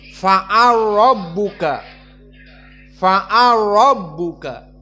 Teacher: fa'ala rabbuka lam masuk kepada ro menjadi fa'al rabbuka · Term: idgham al-kabir